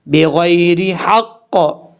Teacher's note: غین کو موٹا پڑھا جائے گا، یعنی حروف مستعلیہ میں سے پر پڑھا جائے گا